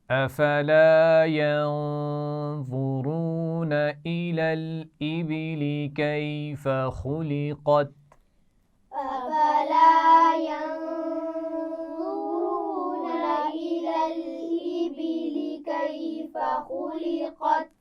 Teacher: خلقت خا اور قاف موٹے پڑے جائیں گے